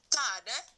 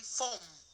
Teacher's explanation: You will not be able to pronounce the R. You will assume it.